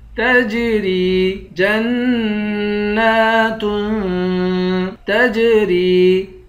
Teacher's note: تا کو جیم کے ساتھ ملا کر جیم پر قلقلہ کریں گے، را کو یا سے ملائیں گے، یا کو ایک الف کی مقدار کھینچ کر پڑھیں گے۔